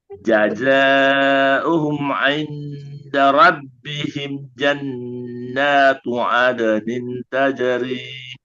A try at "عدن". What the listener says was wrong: Satu lagi Bu ya. Nin, tahan juga. Tajri nin.